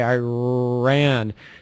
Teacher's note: the tongue is curled but it's not touching the top of the mouth or and it's in the middle area of the mouth okay